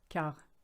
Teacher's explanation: the QU is a K, quart, and you don't say the T, silent letter